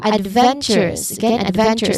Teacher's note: adventurous places stress on ven which is the third syllable from the end